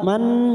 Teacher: Fathah berdiri dua harakat. Man nun yang bertasdid gunnah musaddadah, kita tekan 3 ketuk